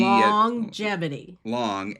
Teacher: The G in longevity is pronounced twice. Once with the N as in long. So there's a G longevity.